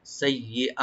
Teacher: তো সিন open রাখবেন আর ইয়াটাকে মাঝখানে ডাবল করে পড়তে হবে, টানবেন না। সাইয়্যি হামজাকে এখানে ওপেন করে রাইট দিয়ে পড়বেন গলার শেষ থেকে।